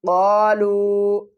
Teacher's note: چھوٹی مد ہے، 3 الف کی مقدار کھینچ کر پڑھیں گے۔